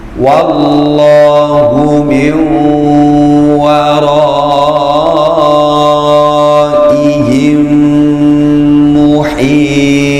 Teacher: ada nun mati, nun sukun yang ketemu dengan waw, dibaca idgham bi gunnah. Idgham itu artinya merangkapkan, kemudian gunnah disertai dengan dengung.